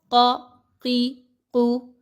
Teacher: زبان کے بالکل شروع کے سرے کو پیچھے سے جہاں سے زبان شروع ہو رہی ہے اس کو اوپر کے نرم تالو کے ساتھ ملائیں گے تو قاف ادا ہوگا.